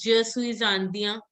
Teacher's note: N is not to be pronounced. It's the nasal sound.